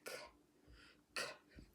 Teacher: it's an unvoiced sound because we can't feel the vibration in our vocal cords when we make the k sound.